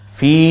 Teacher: জেরের পরে ইয়া সাকিন, এজন্য আমরা এক আলিফ টেনে বলবো